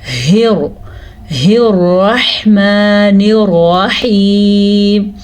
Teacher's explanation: दोनों रा के ऊपर ज़बर हैं, दोनों रा पुर पढ़े जाएंगे। पुर का मतलब मोटे पढ़े जाएंगे।